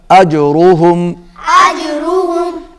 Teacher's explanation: रा मोटा पड़ा जाएगा, पुर पड़ा जाएगा।